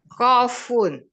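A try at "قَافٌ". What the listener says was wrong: Nah, panjang dulu qafnya.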